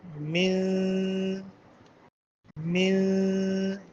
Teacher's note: طرف لسان کو تالو سے تھوڑا سا علیحدہ رکھ کر اس کی آواز کو خشوم میں ایک الف کے برابر چھپا کر ادا کریں گے